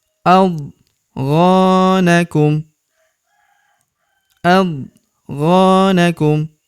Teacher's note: huruf gho kita panjangkan dua harakat karena terdapat tanda alif di depannya